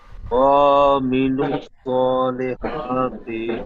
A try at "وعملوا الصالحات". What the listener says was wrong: তো এখানে ওয়ামিলু ওয়া আইনটি টান দিয়েছেন, আইন টান হবে না। ওয়ামিলুস সালিহাতি ওয়ামি আইন যাবে আমিন